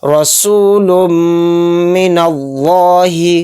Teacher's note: لفظ اللہ کے لام سے پہلے نون پر زبر ہے تو اس لفظ اللہ کے لام کو بھی ہم موٹا یعنی پر کر کے چلیں گے